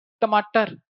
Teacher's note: हम सिंपल ट इतना मेहनत से नहीं बोलते। जीभ मुर्धा तक नहीं छूती। और तालू पर आकर रुक जाती है।